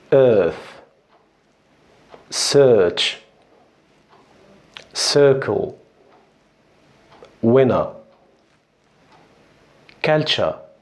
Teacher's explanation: في البريتش انجلش هنا بيعملوا drop لل sound اللي هو صوت الار